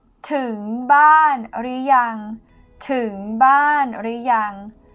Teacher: ถึง rising tone to arrive. บ้าน falling tone home or house. หรือยัง or not yet.